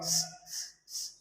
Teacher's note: سین کو سختی سے سیٹی کے ساتھ ادا کیا جاتا ہے